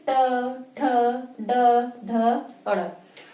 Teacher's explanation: जब ट की बारी आती है यानी ट वर्ग की तो तब क्या होता है? हमारी जीवा मुड़ जाती है।